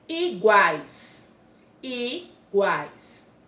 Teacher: o U tem um som fraco, semivogal. O A e guá, ó, vogal, tem um som forte.